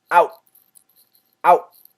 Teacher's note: it's a stop sound okay so help out stop it right at the T don't finish the T